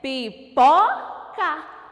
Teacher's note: A sílaba pó, eu ponho mais força para falar. Eu ponho mais intensidade nessa sílaba. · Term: sílaba tônica